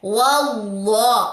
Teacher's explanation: لام کے اوپر کھڑا زبر 2 کاؤنٹس لمبا کریں، ہا کی پیش کو لمبا نہیں کرنا۔